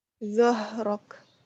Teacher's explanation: Kemudian ha di tenggorokan paling bawah.